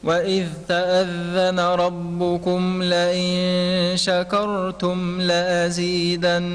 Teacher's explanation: رقق الشين والكاف وفخم الراء